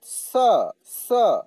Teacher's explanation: दंत स को दांत से, स स ऐसे करके उच्चारण होता है